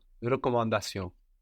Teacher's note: the N on the end of recommand is half silent